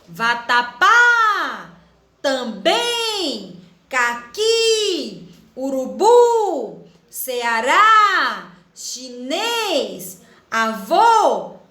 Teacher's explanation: perceberam que a última sílaba é a mais forte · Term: oxítonas